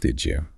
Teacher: The D sound at the end of did and the J sound like why at the start of you merge together. They assimilate to create a J sound like in judge.